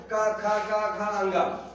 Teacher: तो कंठ से क हो गया क ख ग घ अंग